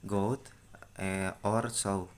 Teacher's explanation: The sound starts with O and ends with U.